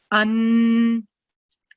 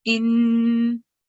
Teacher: So when we are reading this alif with simple fatha stroke, read it as a without prolonging the sound. But when we are reading this alif that has fathatain or tanween on top of it, we produce a nasal sound, and we also produce the sound for 2 seconds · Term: Nunnation